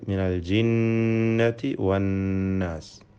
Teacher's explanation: അന്നാസ്, ഇതിലെ നൂൻ മുഷദ്ദദ, ഷദ്ദ നൽകപ്പെട്ട നൂനിനെ മണിച്ചുകൊണ്ട് ഉച്ചരിക്കണം. 2 ഹറക്കത്തിൻ്റെ അളവിൽ ഗുന്നത്ത് നൽകണം എന്നർത്ഥം. ഈ സൂറത്തിലെ എല്ലാ വചനത്തിലും നൂൻ മുഷദ്ദദ വന്നിരിക്കുന്നു.